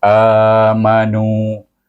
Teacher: a dibaca dengan mat badal sebab hamzah mendahului huruf alif, iaitu dibaca dengan dua harakat.